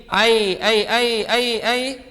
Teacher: നാവിന്റെ മധ്യം മേലെ അണ്ണാക്കിലേക്ക് ഉയർത്തി ആണ് ഈ മൂന്ന് അക്ഷരങ്ങൾ ഉണ്ടാവേണ്ടത്